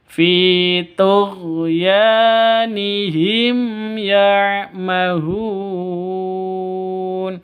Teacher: Di sini ada mim mati bertemu dengan ya, terang, jelas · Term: izhar safawi